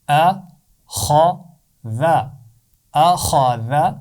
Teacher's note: صرف خا کی آواز کو موٹا پڑھنا ہے، حمزہ اور ذال کی آواز کو موٹا نہیں پڑھنا